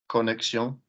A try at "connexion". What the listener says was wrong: Lovely. Nice accent.